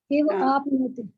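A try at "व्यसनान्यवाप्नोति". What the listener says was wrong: व्यसनानी के बाद आप ई कहाँ से लगा दी? कहाँ से आ गया ई आपके पास? अवापनोति आप पहले बोली थी, वो सही था। व्यसनानी प्लस अवापनोति। हाँ आप पहले से यही बोले थे। बहुत अच्छा था, लेकिन दोबारा में आपने अपने स्वयं गलती।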